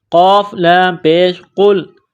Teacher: قاف کو لام کے ساتھ ملانا ہے، قاف کو موٹا کرنا ہے